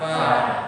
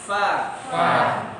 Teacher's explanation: bibir bawah digigit gigi atas